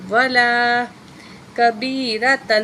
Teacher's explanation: تو یہاں جو تشدید والی جو ہے نا واو ہوتی ہے، اس کو 2 دفعہ پڑھیں گے